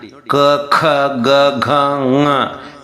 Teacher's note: ಕಂಠದಿಂದ ಶುರುವಾಗುತ್ತೆ 5 ಅಕ್ಷರಗಳು